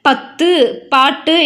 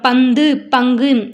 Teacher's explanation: குற்றியல் உகரத்துல தன்னுடைய ஓசையிலிருந்து அரை மாத்திரையாக குறைந்து ஒலித்தது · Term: குற்றியல் உகரம்